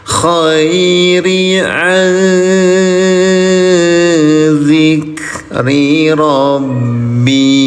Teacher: Nun sukun bertemu dengan huruf za. Cara bacanya samarkan bunyi nun sukunnya. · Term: ikhfa